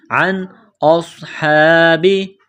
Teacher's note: نون ساکن کے بعد حمزہ ہے حروف حلقی ہے تو نون ساکن پر غنہ نہیں کریں گے